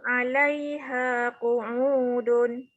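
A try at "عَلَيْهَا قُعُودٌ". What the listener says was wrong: Dia tak boleh baca dun ya sebab dia tanwin tu, tanwin depan sama, tak boleh baca dun. Ya, betul. Kena wakaf.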